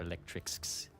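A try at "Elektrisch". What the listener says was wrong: Electrisch. Electrisch, yeah. You enunciate the S, but kind of stretch it out a little bit for the sh. Electrisch.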